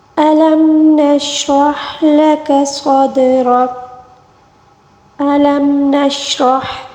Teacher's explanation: ہا کو حلق کے درمیانی حصے سے ادا کریں گے